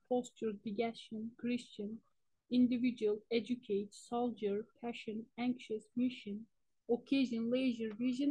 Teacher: This process, commonly referred to as palatalization, is quite common word internally.